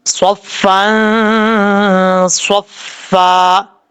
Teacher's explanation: نون تنوین کا اخفا، ایک الف کی مقدار غنہ کر کے پڑھا جائے گا